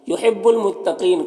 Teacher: قاف حروف مستعلیہ میں سے پر پڑھیں گے۔ یہاں پر یا مدہ ہے، اور اگر یہاں پر وقف کریں گے تو نون کا زبر سکون سے بدل جائے گا، تو پھر مد عارض وقفی ہوگا۔